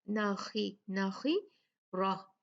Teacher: را جو ہے اس پہ فتحہ ہے تو یہ بھاری ہوگا، مفخم پڑا جائے گا